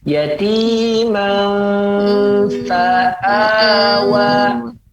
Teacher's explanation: maka dia disamarkan antara mim dan fa dan posisi mulut menyiapkan huruf yang setelah tanwin tersebut